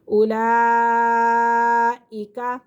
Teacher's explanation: اولئک، اولئک الف پیش او، لام کھڑا مز زبر لا، کھڑا زبر بھی ہے، مد بھی ہے اور حمزہ اپنی اصلی حالت کے اندر ہے تو اسی لیے یہ بڑا مد ہے، اسے 5 سے 6 الف کے برابر کھینچ کر پڑھیں گے